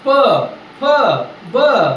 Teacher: खालचा ओ ओठ आणि वरचा ओठ एकमेकाला चिटकाला पाहिजे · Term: ओष्ठ्य वर्ण